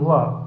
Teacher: option A वा, दंतोष्ठ ध्वनि है